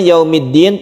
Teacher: yaumiddin tekan di Dal ini karena dia itu bertasydid